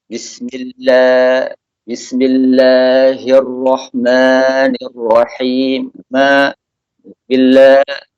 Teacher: dagunya ditarik-tarik ke bawah, maka suara fathah yang keluar seperti suara imalah.